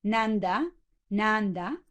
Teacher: and for sour you would have nanda so this first na this first syllable is extra metrical and and it's rather reduced